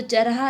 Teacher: पूर्वी हिंदी में ढ का उच्चारण प्राय रह के रूप में होता है, चढ़ा तो चरहा, जबकि पश्चिमी हिंदी में सामान्य रूप बड़ा चढ़ा गड़ा।